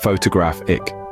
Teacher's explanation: we have photographic, where the stress is on the third syllable, photographic.